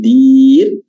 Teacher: huruf ro-nya yang terakhir ini kita baca tarqiq, ya, tipis, ya, karena didahului sama harokat kasrah.